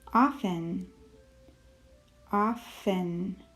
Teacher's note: we do not make the sound of the t in that word often